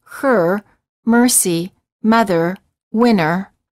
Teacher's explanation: the tip of the tongue is curled up and pulled back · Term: r as in bird